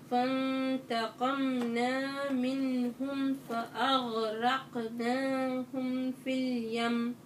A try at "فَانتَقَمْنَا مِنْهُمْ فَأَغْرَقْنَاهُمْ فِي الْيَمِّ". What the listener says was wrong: لا الوقف على الميم المشددة غنة طويلة في اليم هيك الوقف على الميم المشددة أو نون المشددة غنة طويلة